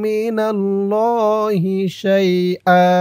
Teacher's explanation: ফালান তামলিকা লাহু মিনাল্লাহি, মিনাল্লাহি শাইআ, শাইআ ওয়াকফা করার কারণে এই দুই জবর থেকে এক জবর রিমুভ হয়ে গেছে, এক জবর দিয়ে একালিফ টান দিয়ে পড়া হয়েছে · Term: মধ্যে এওয়াজ